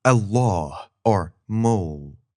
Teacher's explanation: this sound is a lowercase l with a line coming through it, and it's pronounced in 2 spots in your mouth. The front of your tongue comes up near your front teeth, l, and the back of your tongue raises up too, l.